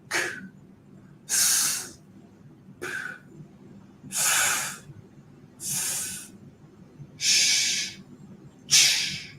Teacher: With your fingers, you should feel no vibration here on your vocal cords, okay? So that means voiceless.